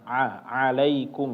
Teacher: mengalir suaranya tapi sedikit ya seperti mengucapkan huruf ain ya tidak berlebihan tidak berlebihan ya. A alaikum ya tidak benar-benar mengalir. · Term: bainyah